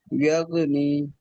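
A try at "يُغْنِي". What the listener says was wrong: ইয়াগো নয় ইয়োগো, ইয়োগো নি।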